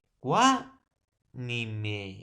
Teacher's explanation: cuá, profesor, sería tónica porque lleva la mayor fuerza de voz. Y cuá, ni me, ni y me serían átonas porque son sílabas inacentuadas.